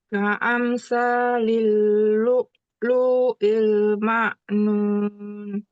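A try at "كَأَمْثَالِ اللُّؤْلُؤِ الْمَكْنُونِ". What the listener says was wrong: Lu yang kedua nggak panjang. Lu'lu'il. lu'lu'il. Salah. Kalau lu'lu'il, lu-nya berarti panjang. Ini lu-nya nggak boleh panjang. Lu'lu'il. Mak, mak, kaf. Mak, nun.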